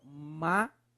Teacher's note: Palavras cuja antepenúltima sílaba é a mais forte. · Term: Proparoxítonas